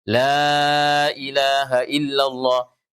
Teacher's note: Itu la ilaha illallah kita baca la 4 harakat karena ini majaiz ya.